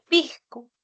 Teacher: La aspiración de la S como una J suave, por ejemplo, en lugar de que se escuche pisco, se escucha pisco como una J suave.